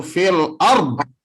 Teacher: Iya, jangan sampai terjadi kolkolah, jangan. Jadi dotnya harus dibaca tapi tanpa kolkolah.